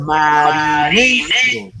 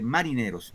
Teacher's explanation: El acento va en ne.